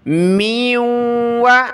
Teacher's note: میم کو نون کے ساتھ اور واو کے ساتھ ملا کر ہم نے ناک میں آواز پیدا کرنی ہے